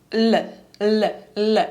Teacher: він маєме ль у випадку коли ми вимовляємо польське л ми ми будемо торкатись під небіння ззаді за зубами І лише кінчиком нашого язика